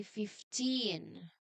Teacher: the V changes completely to an F sound. So say the first part with a quiet F sound.